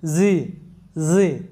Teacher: মৌমাছি যেরকম আওয়াজ করে ওরকমভাবে জ সাউন্ডটা আসে